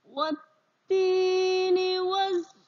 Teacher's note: bacaan wa langsung disambung dengan bacaan tak yang ditasdid, nak. Sehingga alif lamnya di sini tidak terbaca. Ya. Ini namanya bacaan idgham syamsiyah.